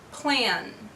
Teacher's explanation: Plan ends with the sound N, and N is a voiced sound